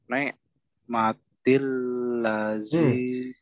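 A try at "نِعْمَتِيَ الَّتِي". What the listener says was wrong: nek matian ya-nya ketinggalan dan nek nek nek bukan nek Ni ni ni ni. Ni. Ni ni ni ni. Ni.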